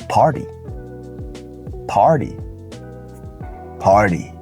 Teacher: the T sound becomes a d because it is flapped remember it's in between a vow sound it is in between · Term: flap T